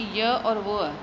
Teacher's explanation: हवा का प्रभाव तो रहता है किंतु संघर्षण नहीं होता, मतलब घर्षण बिना घर्षण के हमारे पास ये निकल जाता है। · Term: अर्ध स्वर